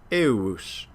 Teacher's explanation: the digamma is heard as a kind of a U sound